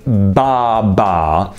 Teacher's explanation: I make the consonant sound by putting my lips together, completely stopping the air flow